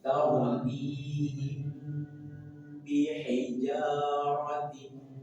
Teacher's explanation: Ada mim sukun bertemu dengan ba, maka tahan 2 sampai 3 rokat dan dengungkan.